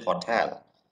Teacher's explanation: you have to give additional stress in the syllable tell